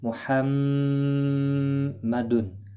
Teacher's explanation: میم مشدد پر غنہ ہوگا. نون مشدد اور میم مشدد جہاں پر بھی ہوتے ہیں ان پر غنہ ہوتا ہے. · تنوین کے بعد حرف حلقی کا حمزہ ہے، اظہار حلقی ہوگا، یہاں پر غنہ نہیں ہوگا